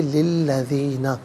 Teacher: لام کے نیچے زیر ہے، اسے الذین کے لام کے ساتھ ملائیں گے، درمیان میں سے الف یعنی حمزہ کو حذف کیا جائے گا، اسے ہم پڑھیں گے للذین۔